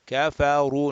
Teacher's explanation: Ra with the dhamma is going to be mufakham, rounded, heavy, full mouth. Kafaru, raise the back of the tongue.